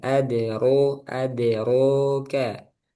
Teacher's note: Eh, e tipis ade jangan adro ad de adro gitu ya. Rnya tebal adroka knya tipis lagi. Adru adroka mal huomah hu mencucuk hu sempurnakan huomah.